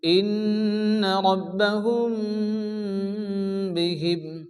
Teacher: মিমের সঙ্গে বাকে মিলিয়ে গুণাসহ পড়তে হয় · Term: ইখফায়ে শাফাবি